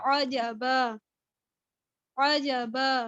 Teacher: یعنی کسی حرف میں کوئی تبدیلی نہیں آئے گی، بلکہ حرکت جو ہے، اب یہ دیکھیں، اب میں نے جب اس پر وقف کیا تو جو تنوین ہے اس کی ایک زبر اڑ گئی